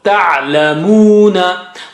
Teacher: that waw is waw mad. Okay, so you got to stretch mu